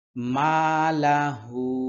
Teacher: এখানে তিন আলিফ টানতে হবে যেহেতু চিকন চিহ্ন আছে যেকোনো জায়গায় এরকম চিকন চিহ্ন থাকলে তিন